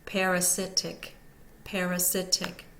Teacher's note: secondary stress the first one the second syllable is unstressed and the third syllable is primarily stressed and the last syllable is unstressed